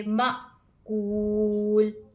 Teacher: حمزہ کو ہم جھٹکا دے کر پڑھیں گے